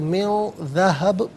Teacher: वक्फ़ की सूरत में, रुकने की सूरत में मिन ज़हब पढ़ेंगे